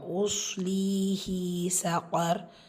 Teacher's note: ஸோ ரா சுக்கூன் ஆகிடும். முந்தைய இடத்துல ஃபத்தா இருக்கிறனால அந்த ரா சுக்கூனை நீங்கள் வல்லினப்படுத்தி ஓதணும்